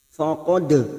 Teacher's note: Faqad dal sukun yang mati asli di tengah kalimat qalqalah sugro